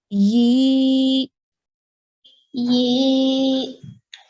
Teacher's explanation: So that ye sound that we just made stretches for 2 counts. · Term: ya madya